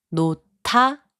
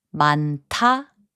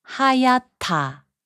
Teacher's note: 디귿 and 히응 are combined to make a 티읒 sound. 놓다, which means to let go, is pronounced as 놓다.